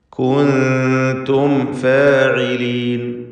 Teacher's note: സാക്കിന തമീമും ശേഷം ഫാവുമാണ്. സൂക്ഷ്മതയോടെ ഇൽഹാർ ചെയ്യണം. ഷഫവി അക്ഷരങ്ങളാണ്.